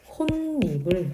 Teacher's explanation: 디귿 뒤에 음가가 더 센 비음 니은이 왔어요. 그래서 이 비음의 영향으로 홑, 니불이 아니라 혼니불 이렇게 발음이 되죠. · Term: 니은 첨가